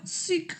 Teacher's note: Vamos a poner la boca como una U chiquita, bien chiquita, y en vez de decir U, decimos I, pero con la boquita como si fuera una U. Pongo la boca como una U y digo I